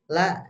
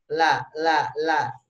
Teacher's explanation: Ya, tapi yang harus digarisbawahi la jangan keluar dari gigi, Pak. La itu di belakang gigi ya. La di tempat gusi dan belum ngadu ke giginya.